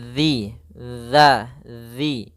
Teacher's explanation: Karena di sini adalah zal yang mana makhrajnya, tempat keluarnya adalah ujung lidah kita menempel dengan gigi seri atas, dan dia kalau bisa sedikit tergigit gitu ya